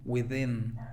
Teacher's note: Sonido TH vibrante. Within. Con el acento en la segunda I